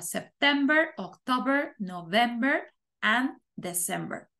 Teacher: van acentuadas en la segunda